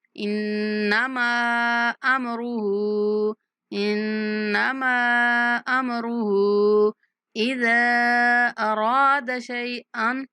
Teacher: اذا کو 3 سیکنڈ تک لمبا کریں گے